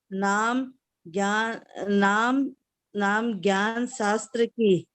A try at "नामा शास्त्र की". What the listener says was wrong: ज्ञान नहीं है, नामा शास्त्र की।